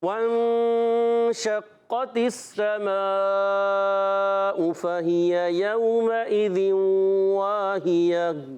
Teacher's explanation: वाव की अदायगी होती है होंठों की गोलाई से